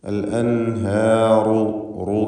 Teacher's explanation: റാഇന് തഫ്ഖീമുണ്ട്. അൽ അൻഹാറു, റു എന്ന് തടിപ്പിച്ച് റാ ഉച്ചരിക്കുക